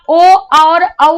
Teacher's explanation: कंठ और ओष्ठ से ओ औ बोला जाता है